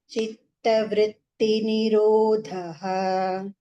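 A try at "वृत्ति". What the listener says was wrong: Be careful with the E ki matra. It would becomes long E, okay? Vritti, it is not long E. It is vritti.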